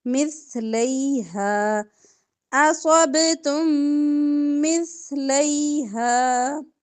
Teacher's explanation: با پر کلکلا اصبتم مثلیہا تم مثلیہا سا نرمی سے لیہا ہا کو کھینچیں گے زبر کے ساتھ الف ہے